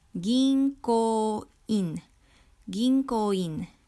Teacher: Notice that the N syllable or N becomes NG sound because it is followed by a K or ko. So it becomes ginko.